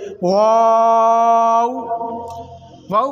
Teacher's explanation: वाव को दोनों ओंठों की गुलाई से अदा करेंगे।